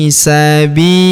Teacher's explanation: fiili. Huruf bi kita panjangkan dua harakat karena ya sukun di depannya.